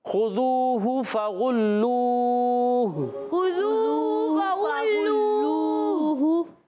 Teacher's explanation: اور غین ادا ہوگا حلق کے اوپر والے حصے سے · جائیں گے، اور لام پر بھی پیش، واو مدہ بھی ہے، واو ساکن سے پہلے پیش، واو مدہ بھی ہے پھر ہونٹ گول ہو جائیں گے